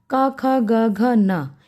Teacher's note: क ख ग घ न इनकी ध्वनियों को अगर आप देखेंगे उच्चारित करेंगे तो इनकी ध्वनि हमारी कंठ से निकलती है